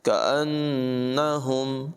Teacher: کاف کی آواز بریک ہوگی، نون مشدد میں غنہ ہوگا